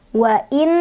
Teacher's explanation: ada gunnah musyaddadah karena ada nun bertasydid. Dibacanya berdengung 2, 3 atau 4 ketukan.